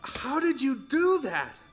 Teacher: the D sound and the Y sound combine to make a j sound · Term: connected speech